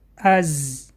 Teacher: Буква «За» образуется при приближении передней части спинки языка к передним зубам. Кончик языка при этом касается передних нижних зубов.